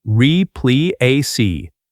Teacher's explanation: stress on the second part